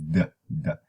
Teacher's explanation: you have the closure and then you move on and you don't see that aspiration